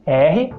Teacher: agora você vai tentar fazer o som do R porém sem vibrar as cordas vocais